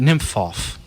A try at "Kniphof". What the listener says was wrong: I bet it's pronounced in German. I bet it's pronounced Kniphof. Kniphof. Because they pronounce the K in.